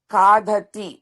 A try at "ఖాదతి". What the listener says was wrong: డాకి ఒత్తొద్దండి, ఖాకు ఒక్కటి పెట్టండి, మిగతా రెండు అల్పాక్షరాలే. దతి, ఖాదతి.